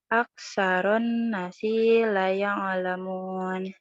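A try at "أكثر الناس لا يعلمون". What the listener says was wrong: Bukan nasi sayang, nunnya dibaca panjang. Nasi la ya'lamun.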